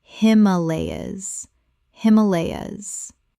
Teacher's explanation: Four syllables with the stress on the second.